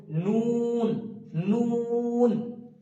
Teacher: জীবের আগাটা উপরের যে সামনের দুটো দাত আছে সেই দাঁতের গোলার সামনে লাগে এবং ঠুটটা হালকা গোল হবে · দাঁতের গোড়ার সঙ্গে লাগে এবং ঠোঁটটা হালকা গোল হবে, নুন, নুন। তারপর আসছে ওয়াও।